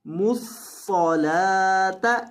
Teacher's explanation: लाम को लंबा करेंगे एक अलिफ के बराबर और सौद को मोटा करेंगे और कौफ को भी मोटा करना है, कौफ को भी मोटा करना है और सौद को भी मोटा करना है और लाम को लंबा करना है।